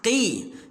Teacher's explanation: Tekan sikit lidah kita tu. Kita bila sebut huruf qaf ni terasa pangkal lidah tu tekan dekat anak tekak tu. Anak tekak yang tergantung-gantung dalam mulut tu kan.